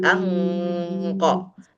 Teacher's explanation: meskipun gunahnya masih di hidung tapi qo sudah berbentuk mulutnya